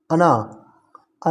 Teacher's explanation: ये मूर्धन्य है स्पर्श है सघोष है नासिक और अल्प प्राण है